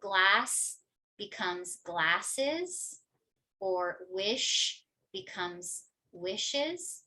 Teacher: So for example, in a word like asked, right, it's going to sound more like KT. Whereas a lot of words that end on different consonants like S or SH, you will have an extra syllable